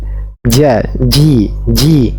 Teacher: huruf syin sama-sama dari bagian tengah lidah yang menaik ke atas kalau Jim dia sampai menyentuh apa eh bagian atas langit-langit tengah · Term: huruf Jim, huruf jim